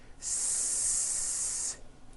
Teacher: The S consonant, made with air going through your front teeth.